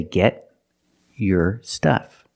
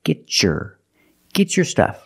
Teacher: If I separate, I can say get your stuff. But because I have a T before a Y making the Y sound, I can change the T to a ch sound like chicken and say get your stuff.